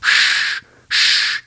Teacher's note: a hard SH sound, which would be where the tip of your tongue goes to the roof of your mouth